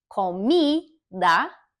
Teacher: the mi, that syllable is more stressed. It's just a little bit louder, but each syllable is pronounced the same.